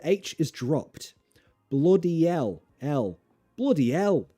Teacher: also notice the H is dropped